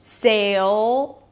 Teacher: Then a dark L. Pull the tongue in, sail, create that tension. You hear that dark sound. Sail, that's the dark L.